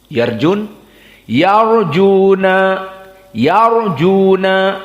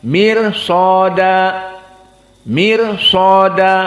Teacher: rnya tafkhim yarjuna karena sebelumnya fathah kalau sebelumnya kasrah seperti mirsada maka rnya murqqoh